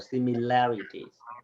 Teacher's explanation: it's semi, and then we stress on the third syllable